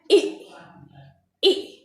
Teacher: ई में जो मुंह है बहुत पतला सा सकरा सा खुलता है, लगभग बंद जैसा है